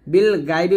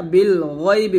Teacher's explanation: বিল গায়বি বলবেন না, বিল গয়বি বলবেন, গয় মোটা করে